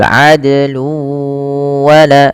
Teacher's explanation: Dal sama hukumnya dengan qaf dan jim, harus memantul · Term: qalqalah